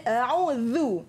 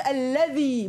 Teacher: Ingat huruf zal, mesti keluarkan hujung lidah, letak dekat depan gigi depan ya. So bunyi dia a'udzu, bukan a'udzu.